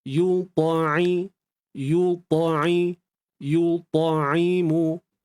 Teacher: Huruf ain sempitkan tengah kerongkong